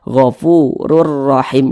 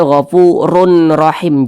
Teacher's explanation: cara bacanya dengan cara memasukkan kemudian tidak berdengung Apanya yang dimasukkan jadi bunyi tanwin ini masuk ke huruf Ro Jadi dibaca gofururahim jangan dibaca gfurun rahim jangan tapi langsung masuk · jangan tapi langsung masuk ke huruf ro gofurur rahim seperti itu kemudian dia tidak berdengung tidak digunahkan jadi pendek saja jangan dibaca gofurur im jangan ditahan seperti itu jangan dipanjangkan seperti · Jadi bunyi tanwin ini masuk ke huruf ra. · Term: idgham bila gunnah